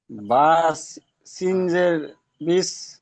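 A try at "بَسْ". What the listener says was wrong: বাসিন জের নেই, কি আছে দেখেন, বাসিন বাস। ইজরা করেন। বার উপরে জাবার আছে, সিনের উপরে সাকিন আছে, সাকিনওয়ালা অক্ষরকে তার ডান দিকের অক্ষরের সাথে মিলিয়ে পড়তে হয়।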